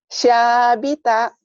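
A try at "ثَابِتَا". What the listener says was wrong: Sa-nya kayak cadel ya. Ujung lidah ke ujung ini. Sa Sabita ya.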